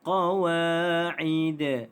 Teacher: Dal ini dimatikan kerana waqaf, maka dia adalah qalqalah.